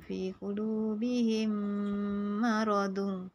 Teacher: Idgham syafawi, memasukkan huruf mim mati ke dalam huruf mim berbaris dan dibaca dengan dengung